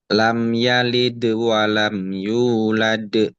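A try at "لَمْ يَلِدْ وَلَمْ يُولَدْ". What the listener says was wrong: Ketika kalau yang kedua agak kurang tepat makhrajnya.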